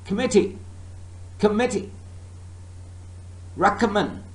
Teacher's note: table is table the first syllable is stress what about in committee and recommend second syllable is stressed